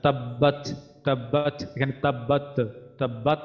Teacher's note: এখানে যেন কলকলার মতো তায় যেন কলকলা না হয়।